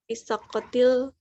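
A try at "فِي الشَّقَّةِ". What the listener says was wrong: Tidak ada alif lamnya. Tidak perlu fisyaqqatil, tapi fisyaqqati.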